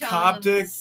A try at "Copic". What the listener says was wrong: There's not a T in it, though. I think it's Copic. You keep, I don't know why you keep saying Coptic.